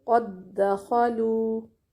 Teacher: مثلا قد دخلوا، دال 2 دفعہ آیا ہے، پہلا دال ساکن قد میں اور دوسرا دخلوا میں، تو ان دونوں کو ملا کر ایک ہی دال بنا دیں گے شد والا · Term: ادغام مثلین